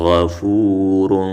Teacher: غین او را په ډکه خوله وویلی شو دې تفخیم وشو غفورن تنوین کې اخفا وشوه را زبر را حا يا زير